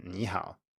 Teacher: if you have two third tones in a row the first will turn into a rising tone